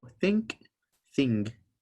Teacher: Just like in English, when you say think or thing, both times, the N before the K or the G sound goes to the back of your throat.